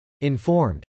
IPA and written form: .ɪnfˈɔːrmd (informed)